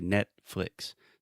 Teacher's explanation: my tongue is in perfect position to produce the T but I don't make that little sound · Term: stop T